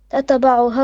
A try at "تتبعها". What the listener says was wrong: On your ta, don't make qalqala. You say tataba. It's tatba.